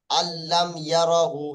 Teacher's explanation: লামের মেসাল, তানবিন নুন সাকিনের পরে লাম আসলে ইদগামে বেলাগুন্না